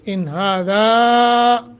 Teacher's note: زیادہ لمبا کریں گے، مد منفصل آ گئی ہے۔